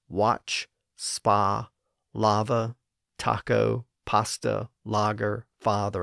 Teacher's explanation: at least in American English there's been a convergence of the short a and short o sounds in many words